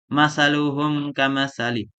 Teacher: Apabila mim mati bertemu dengan huruf hijaiyah selain huruf mim dan ba, maka wajib menjelaskan mim tanpa dengung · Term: idhar syafawi